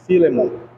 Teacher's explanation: Como se fosse a sílaba tônica, o fi. Por quê? Porque termina com N e não com M.